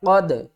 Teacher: واو زبر وا، لام زبر لا، والا قوف دال زبر قد. یہاں پر قوف کو ہم نے موٹا پڑھنا ہے، قوف دال زبر قد، دال کے اوپر قلقلہ بھی کرنا ہے.